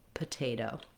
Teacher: Both O's are the same, where this first O in potato is vowel schwa, very short, sounds like and then the last O is a clear diphthong O